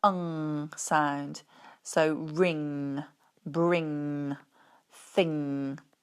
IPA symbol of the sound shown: ŋ